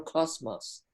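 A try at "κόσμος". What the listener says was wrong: it's just a straight s it's not a it's not a buzzy uh s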